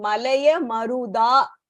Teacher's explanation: In the next line, Malaya Maruda, and the Da is just normal Alpa Pranaha.